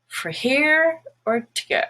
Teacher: the word for also becomes fur when it's not stressed